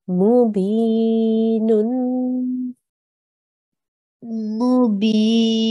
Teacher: So extend this and make a nasal sound. There's a tanween here, so you need to make a nasal sound at the end.